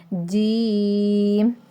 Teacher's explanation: جو زبان کا درمیان ہے اوپر والا جو تالو ہے اس کے درمیان سے لگے